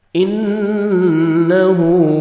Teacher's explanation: نون مشدد غنہ کریں گے. نوز میں ساؤنڈ لے کے جائیں گے. الٹا پیش ہے.